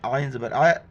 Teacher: عین کو گلے سے کرنا ہے